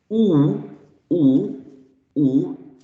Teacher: in terms of the position of the tongue, goes way back. Ooh, ooh, while ooh, ooh, ooh is not so back as ooh, ooh.